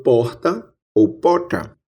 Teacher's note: Aqui no interior da Paraíba, como em boa parte do interior do Nordeste, temos a pronúncia de uma fricativa aspirada R.